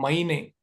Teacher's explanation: अ और इ को मिला के आई बनता है